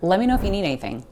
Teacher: And again, we have you reducing to ya. And need anything also gets kind of smushed together.